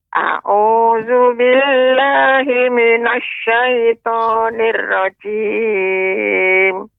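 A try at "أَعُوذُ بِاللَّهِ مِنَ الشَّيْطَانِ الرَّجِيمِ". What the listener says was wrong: Pengucapan ro, jadi dia tidak boleh terlalu banyak getarannya. Nirrajim. Nah, itu kurang tepat, Nek. Pengucapan yang tepat, A'udzu billahi minasyaitonir rajim. Nirrajim. Ya, getarannya jangan terlalu banyak. Jangan nirrajim, tapi nirrajim, tebal hurufnya.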